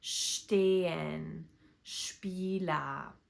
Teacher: s t and s p at the beginning of a word make the sound sht or shp